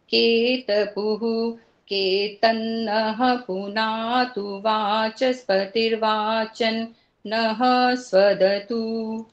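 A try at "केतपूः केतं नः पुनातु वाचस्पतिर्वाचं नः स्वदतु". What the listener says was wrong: बिल्कुल ठीक है जी, 2 गलतियां हैं केवल,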